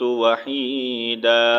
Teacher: ایک زبر کو میوٹ کریں گے، ایک زبر جب پڑھیں گے تو کیا بن جائے گا، دال الف زبر دا، الف مدہ بن جائے گا